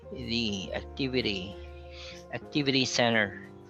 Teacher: almost all words that end with ty are pronounced as D, like a soft D